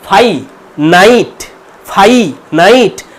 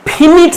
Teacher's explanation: এবার এই যে এ আর আই এগুলো অ্যাকচুয়ালি ডিপথং, এগুলো ভাওয়েল সাউন্ড বলে, কম্প্যাক্ট ভাওয়েল সাউন্ড, দুটো ভাওয়েল সাউন্ড এক জায়গায় হয়েছে, একটা হচ্ছে আ একটা হচ্ছে ই, দিয়ে হয়েছে আই।